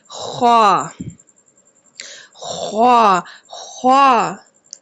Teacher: ख्वा का जो मखरिज है हलक के ऊपर वाले हिस्से से ख्वा की अदायगी की जाती है · خا کا جو مخرج ہے حلق کے اوپر والے حصے سے خا کی ادائیگی کی جاتی ہے